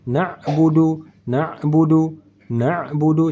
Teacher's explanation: ain di tengah kerongkongan bukan di hidung dan bukan juga hamzah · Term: ain sukun